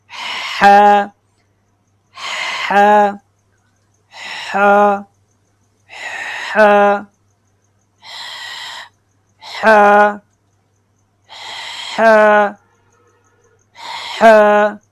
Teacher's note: ہا جو ہے نا یہ حلق کے درمیان والے حصہ سے ادا ہوتا ہے، ٹھیک ہے. ہا یعنی آپ جو گلا ہے گلے کے درمیان انگلی رکھیں، پھر تھوڑا سا زور سے بولیں ہا ہا ہا ہا ہا ہا ہا، ٹھیک ہے.